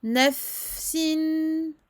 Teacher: Donc, rakhawah, écoulement du son, une bonne durée pour le fa. Nafsin. Il faut bien différencier le fa du sin.